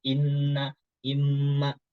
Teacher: makanya imma dan inna ini hurufnya dia dari rongga hidung. Posisinya ketika nun dan mim ini ketika gunnah.